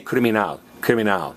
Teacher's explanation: In Spanish, you're stressing the last vowel.